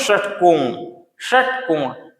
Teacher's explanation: जीभ क्या हो जा रहा है मुड़ जा रहा है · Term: मूर्धन्य